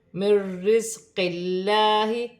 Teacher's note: اللہ کی لام سے پہلے زیر آ رہی ہے، اللہ کی لام باریک پڑھی جائے گی، الف مدہ بن رہی ہے، ایک الف کی مقدار کھینچ کر پڑھا جائے گا۔ · نون ساکن کے بعد را مشدد آ رہی ہے، نون ساکن میں غنہ نہیں ہوگا